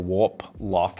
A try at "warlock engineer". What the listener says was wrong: no it's warlock warlock engineer they forgot the P the p is silent when you write it